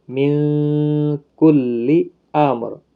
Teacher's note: نون ساکن کے بعد حروف اخفا کا کاف ہے، اخفا حقیقی ہوگا یہاں پر